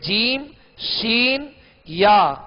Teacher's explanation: جیم شین یا، ان تین حرفوں کا ایک ہی مخرج ہے اور وہ ہے بیچ زبان بیچ تالو، یعنی زبان کا بیچ اوپر کا جو تالو ہے اس کا درمیان، اس سے جیم شین یا یہ تین حروف ادا ہوتے ہیں.